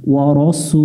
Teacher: সিন অক্ষর শীষ দিয়ে পড়তে হবে, পেশের বামে ওয়াও সাকিন আছে 1 আলিফ টান দিয়ে পড়ব 1 লেখা দেখে।